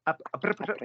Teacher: it's a ch, not a trrr